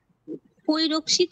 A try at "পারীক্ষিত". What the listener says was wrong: না না না না, পরিতে প অকার রয়েছে তো। হ্যাঁ, পয় অকারটা আকার হবে, আর